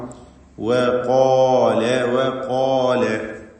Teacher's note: തർക്കീഖാണ് അതിനുള്ളത്. രണ്ട് ചുണ്ടിൽ നിന്ന് തന്നെ അത് ഉച്ചരിക്കണം. ചിലർ തെറ്റായി താഴെ ചുണ്ടും മേലെ പല്ലും ചേർത്ത് പറയും. അത് തെറ്റാണ്, സൂക്ഷിക്കണം. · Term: വാവ്